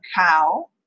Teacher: So we can call the whole thing a back low closing diphthong.